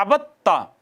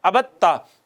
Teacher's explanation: دوسرا یہ ہے کہ دو ایک ہی جگہ سے مخرج سے ادا ہونے والے حروف اکٹھے آ گئے ہیں، پہلا ساکن ہے دوسرا متحرک ہے تو پہلے کو دوسرے میں ضم کر دیا، جیسے عبد تا، دال اور تا اکٹھے آئے تھے، دال ساکن تھی تا متحرک تھی، دال کو تا میں ادغام کر دیا، یہ ہو گیا عبدتا۔